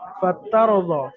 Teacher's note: রকে পুর করে পড়তে হবে, অর্থাৎ মুখ গোল করে পড়তে হবে। ফাতারদা, ফাতার মুখ চওড়া হবে না, বারিক হবে না, ফাতার দ হবে না, ফাতার মুখ গোল হবে, ফাতার দ।